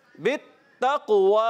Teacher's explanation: काफ उर्फ़े क़लक़ला में से है, क़लक़ला अदा करेंगे।